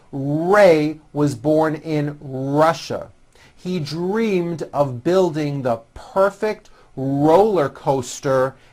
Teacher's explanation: notice how my lips come forward on all my r's and w's